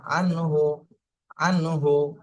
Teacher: নুন সাকিনের পরে ইজের হরফ হা আসছে এইজন্য এখানে স্পষ্ট করে বলতে হবে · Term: ইজহারের